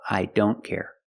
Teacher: I don't care again with don't the t is between consonants so you don't hear it